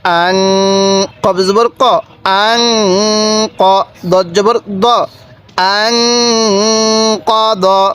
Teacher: দেখুন এই নুন সাকিনের মধ্যে গুনাহ করেছি কেন? নুন সাকিনের পরে কফটি হলো ইকফার হরফ, এজন্য আমরা এই নুন সাকিনের মধ্যে গুনাহ করছি